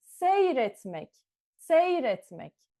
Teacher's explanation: Now we write it as seyretmek, seyretmek. The vowel E is gone